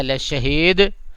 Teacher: دال جو ہے دال کے اوپر قلقلہ کر دیجیے گا ہلکا سا